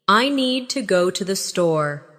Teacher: Make need and store strong. And let to the be quick and light.